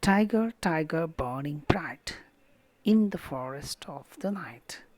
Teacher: So like this we have the trochee, the reverse of the iambic form, stressed followed by unstressed.